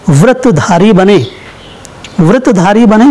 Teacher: व्रतधारी बने भले ही पहला संयुक्त अक्षर है पर अ की ध्वनि निकल रही है इसलिए लघु लघु है और धारी में दोनों स्वर बड़े बड़े हैं, दीर्घ हैं इसलिए गुरु गुरु है।